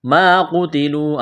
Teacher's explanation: ایک الف کے برابر کھینچنا ہے، ما قتلوا الف مدہ ہے قاف کو موٹا کرنا ہے تا کو باریک کرنا ہے ، واو مدہ ہے ایک الف کے برابر کھینچنا ہے، قل